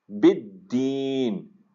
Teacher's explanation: دال کے اوپر تشدید ہے تو شدت اس کے اندر ادا ہونی چاہیے۔ بالدین، لمبا کریں گے کیونکہ وقف ہے آگے۔